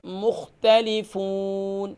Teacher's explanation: قلقلہ نہیں کریں گے خاء پر، مختلفون